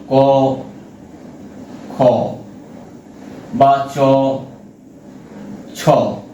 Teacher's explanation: অঘোষ যে ধ্বনিগুলো উচ্চারণের সময় আমাদের ষড়তন্ত্রের কম্পনজাত ঘোষ বা নাদ মিশে থাকে না